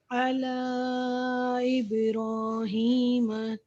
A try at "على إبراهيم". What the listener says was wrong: اللہ اور ابراہیم کے میں تھوڑا سا گیپ دیں. على إبراهيم